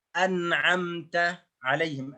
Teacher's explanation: النون الساكنة في كلمة مثال أنعمت عليهم التي في سورة الفاتحة. أنعمت نون سكون ثم حروف عين. أنعمت فلا بد من إظهار النون. Dalam contoh ini kita mendapatkan sebuah contoh ada nun yang ada di dalam satu kata.